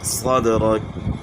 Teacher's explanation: صاد، دال میں جو ہے آپ نے قلقلہ کرنا ہے